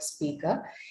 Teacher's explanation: you do not actually pronounce the uh r you don't articulate that r sound at the end of the word speaker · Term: schwa